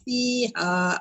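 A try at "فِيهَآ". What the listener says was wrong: Fiha tu panjang. 4 atau 5. Fiha tu jaiz. Ha tu kurang tadi. 4 atau 5.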